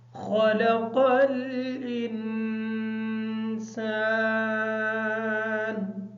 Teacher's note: خلق کی جو خا ہے اس خا کو موٹا پڑھیں گے، قاف کو موٹا کر کے پڑھیں گے۔ انسان کی جو نون ہے یہ نون ساکن ہے، اس وجہ سے اس نون پر غنہ کریں گے۔